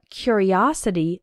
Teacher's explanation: And in the noun form, curiosity, the third syllable is strong, os.